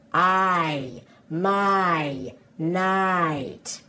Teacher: can you hear how that I sound is actually two sounds pushed together